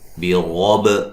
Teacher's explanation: را کو موٹا ادا کریں گے، با پہ قلقلہ کریں گے ، واو کو ادا کرتے ہوئے ہونٹوں کو گول کرنا ہے،